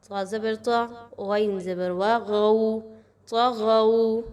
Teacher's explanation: طا اور غین دونوں حروف مستعلیہ میں سے ہیں، دونوں کو پر پڑھا جائے گا